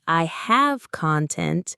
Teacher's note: If you say, I have content, stress on the first syllable, it means you have material or substance.